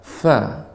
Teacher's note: fa ini adalah bibir bawah dengan gigi seri atas.